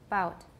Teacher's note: we have voicing only at the beginning of the vowel